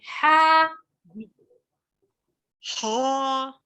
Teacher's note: हा को मोटा नहीं अदा करना, बारीक है